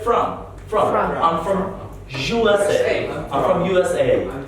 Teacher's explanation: we don't pronounce o or any kind of a vowel as a stretch sound we reduce it as a short sound it's a reduced sound and we say from i'm from i'm